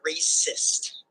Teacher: Imagine you say the word resist. The first syllable re is unstressed, said lightly, and the second syllable sist is stressed, said with more emphasis.